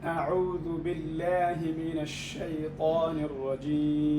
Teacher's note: الهمزة هذه تحتاج إلى تحقيق مع تبيين ترقيقها ومنع جريان الصوت فيها، لأنها من حروف الشدة